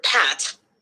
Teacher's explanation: peak of acoustic energy for example when saying the word Pat the P sound involves a burst of air being released from the mouth creating that sudden peak of energy